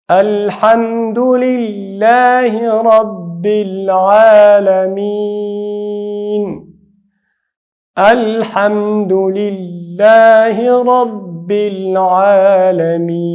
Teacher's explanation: لام ظاهر ویلي د الله نوم باریک ویلي